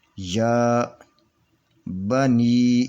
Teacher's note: یہ یا کے اوپر کھڑی زبر ہے، اس کو یا کو دو حرکت کے برابر کھینچ کر پڑھیں گے